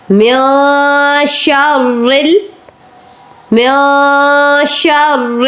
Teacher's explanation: نون کے اوپر آپ نے اخفا کرنا ہے کیونکہ آگے حروف اخفا ہے اور نون ساکن ہے.